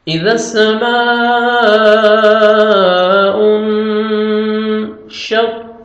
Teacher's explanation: نون ساکن کے بعد حروف اخفاء جو 15 لیٹرز ہیں ان میں سے شین آ رہے ہیں تو نوز میں سم لے کے جائیں گے۔ اذا السماء انشقت، قاف کو موٹا کر کے پڑھیں گے تاکہ لائٹ سے ساؤنڈ آئے گا، تاکہ قاف میں ساؤنڈ مکس نہ ہو، قلقلہ نہیں کریں گے، ڈبل ساؤنڈ نہیں آئے گا، تاکہ لائٹ سے ساؤنڈ آئے گا۔